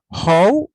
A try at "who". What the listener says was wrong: Be very careful with this one, with the pronunciation, because it is not how, it's how. How. I'm telling you to pay attention to the pronunciation because you are saying this, you're pronouncing this, you will see this word. Do you guys know the meaning of that word? How? it actually means like prostitute. So we don't want to say that. We want to say how. Just remember, vaca. How do you pronounce vaca in English?